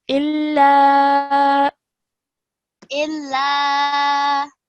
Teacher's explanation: the lam needs to be stretched. Okay, because of the alif mad.